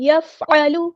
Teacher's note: عین کو مستحلق یعنی مڈل تھروٹ سے ادا کرنا ہے